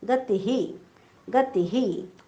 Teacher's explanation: आता शेवटी तीच्या पुढे विसर्ग आहे. ती ऱ्हस्व आहे त्यामुळे विसर्गाचा उच्चार पण ऱ्हस्व ही करायचा आहे आपण.